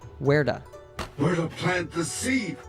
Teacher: the T sound is between two vowels so it turns into an American T sound